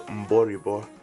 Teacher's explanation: These tones are low, high, low, high.